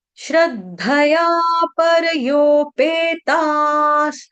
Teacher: विसर्ग का उच्चारण यहां पे हलंत स से किया जाएगा